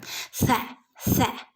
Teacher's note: നീട്ടി കൊടുക്കുക സന്റെ ഉച്ചാരണം നമ്മൾ പഠിച്ചതാണല്ലോ അല്ല കാറ്റ് പുറത്തേക്ക് പോകുന്ന രൂപത്തിൽ പല്ലിന്റെയും നാവിന്റെയും ഇടയിലൂടെ കാറ്റ് പുറത്തേക്ക് പോകുന്ന രൂപത്തിൽ നമ്മൾ സിന് ഉച്ചരിക്കണം